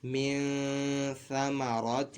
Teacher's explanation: کے بعد حروف اقفا میں سے ثا ہے، تو یہاں پہ نون ساکن میں غنہ کیا جائے گا، یعنی نون ساکن کی آواز ناک میں لے کے جائیں گے اور ایک الف دو حرکات کے برابر کھینچ کر پڑھیں گے